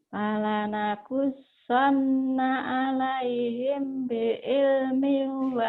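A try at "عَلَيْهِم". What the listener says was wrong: him ditahan, ihfaz safawi. Alaihim ditahan.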